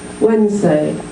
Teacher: how many syllables two so we've chopped out the Nez Wednesday we've dropped the D and we've squashed two sounds together